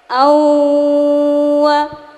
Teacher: Cirinya jika ada nun sukun atau tanwin bertemu salah satu ya nun mim waw. Caranya nun sukun atau tanwin dimasukkan ke huruf berikutnya disertai dengung selama 3 harokat. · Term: idgham bi guna